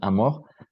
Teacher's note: Le R est prononcé fortement, même à la fin d'un mot. Par exemple, le mot amour, amour, se prononce amour avec une vibration claire du R.